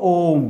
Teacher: ये प्लुत स्वर है इसमें तीन मात्रा का समय लगता है